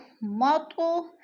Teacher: تو پہ قلقلہ ہے، ہلا کر پڑھنا ہے، جنبش دینا